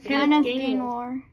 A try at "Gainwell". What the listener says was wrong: You said Kenneth Gainmore.